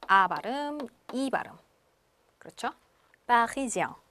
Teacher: 그러니까 에 발음에 앵하고 비음을 해주시는 건데요. 요새 프랑스 사람들은 앵 너무 그렇게 얘기를 하지 않습니다. 그래서 약간 엉처럼 하시면 돼요. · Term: 앵 발음